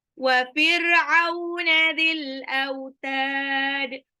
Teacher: au itu sifat lin apabila huruf berharokat fathah bertemu dengan waw sukun